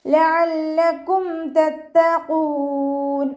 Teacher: ഐനിൻ്റെ മഖ്റജ് വസത്തുൽ ഹൽഖ്, തൊണ്ടയുടെ മധ്യഭാഗം